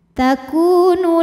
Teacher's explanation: sebab ada wau sukun didahului harakat damah maka Kaf panjang dua harakat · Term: Mad Thobi'i zohiri